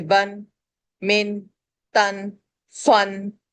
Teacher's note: نون کو ظاہر کر رہے ہیں، نہ چھپا رہے ہیں، نہ اس کو غنہ کر رہے ہیں. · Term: اظہار